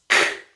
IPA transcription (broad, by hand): k